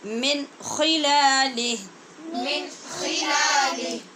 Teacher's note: اس لیے کہ نون ساکن کے بعد خا حروف حلقی میں سے ہے، لہٰذا اظہار حلقی ہوگا